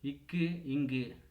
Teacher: நாவின் முதல் அன்னத்தின் அடி